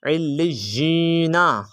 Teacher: علی، نون زبر نا، تو علینا، یا کو تھوڑا لمبا کر کے پڑھیں گے، کیوں؟ کیونکہ آگے حروف لین ہے۔ علینا، حروف مدہ، حروف مدہ ہے۔